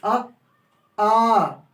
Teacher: बोल के देख लीजिए, आ कंठ से निकली